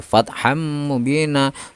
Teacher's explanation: suara tanwin di sini yang mirip nun mati itu hilang dan masuk kepada huruf mim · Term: memasukkan dengan mendengung